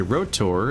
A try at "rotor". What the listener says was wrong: Why do you pronounce it as rotor? It's not supposed to rhyme with kotor.